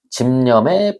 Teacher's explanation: 니은하고 만나서 비읍이 미음으로 바뀌는 현상. 그래서 이런 거를 비음화라고 부릅니다.